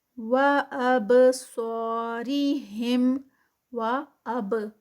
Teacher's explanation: با پہ کلکلا، با کے ساتھ جزم ہے